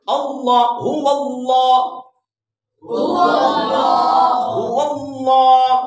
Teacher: واو کو اللہ کے نام کے ساتھ ملانا ہے, ٹھیک ہے جی. ہو اللہ, اللہ کا نام پر کر کے پڑھنا ہے. پر کا مطلب ہے موٹا کر کے پڑھنا ہے.